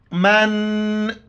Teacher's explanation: نون ساکن ہے، ناک میں آواز پیدا کریں گے